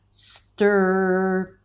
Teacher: All right. And then you round your lips a little bit and you have that nice strong tension of the R sound.